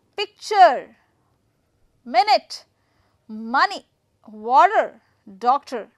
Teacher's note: I'm going to put the stress on first syllable